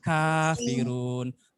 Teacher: Nah, ka-nya itu dari pangkal lidah.